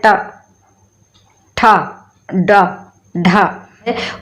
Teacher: हमारी जहाँ पर जीभ हमारी मूर्धा को स्पर्श करती है वहाँ से हमारा टा वर्ण निकलता है।